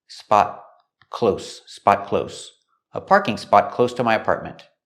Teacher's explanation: The T in spot is a stop T.